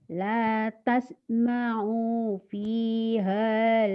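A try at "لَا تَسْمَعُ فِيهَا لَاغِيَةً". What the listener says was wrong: Oja pendek. tasma'u fiha lagiyah. Pendek O-nya. Ada yang manjangin enggak O-nya?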